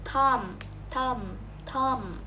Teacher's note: These are dental fricatives because the tongue is placed close to the teeth.